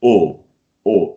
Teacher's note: O, very rounded, very deep. You have to feel it here, right?